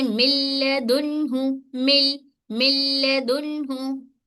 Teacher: नून की आवाज को सॉरी लाम में दाखिल करेंगे लेकिन गुन्ना नहीं करेंगे।